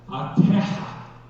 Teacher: In Portuguese, that's a heavy aspirated H sound.